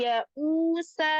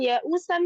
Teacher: kalau waqaf tanwinnya hilang, diganti menjadi sukun. Namun kalau wasol, tanwinnya tetap dibaca.